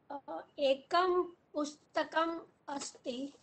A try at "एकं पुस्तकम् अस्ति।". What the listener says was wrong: साधु।